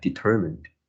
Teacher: the stress should be on the second syllable